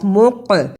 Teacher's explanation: یہاں قاف جزم کی صورت میں حرف قلقلہ ہے، یعنی آواز پلٹ کر آئی